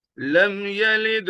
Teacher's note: لم یلد قلقلہ ہوگا، لد دال ساکن ہے، حرف قلقلہ دال ساکن ہے، قلقلہ ہوگا